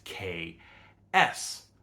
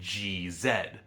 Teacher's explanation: They're the same tongue movement, they differ only in the voicing, the vibration in the throat. Because the X in exam occurs in between two vowels, the voicing from the vowels bleeds over into the X, which in phonology we call assimilation.